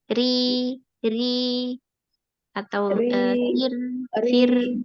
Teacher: Kemudian kalau yang tipis itu atau yang tarqib, pangkal lidahnya tidak naik. Terus tengah lidahnya tidak cekung, terus tidak ada penyempitan pada tenggorokan.